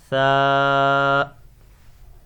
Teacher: You have to pronounce it without whistle. Tha. Touch your tongue with your upper teeth.